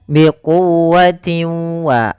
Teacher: Yaitu cara membacanya bagaimana teman-teman? Suara tanwinnya masukkan kepada huruf wau dan ditahan. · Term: idgam bighunah